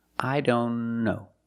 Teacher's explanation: If you link the sounds, I don't know. Link the N with the other N.